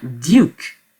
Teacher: Donc les 2 points, c'est pour marquer que la diphtongue est plus longue que les diphtongues qui n'ont pas de points. Donc la prononciation, on traîne un peu sur le you. Donc c'est ça qui signifie les 2 points qui viennent juste après le U.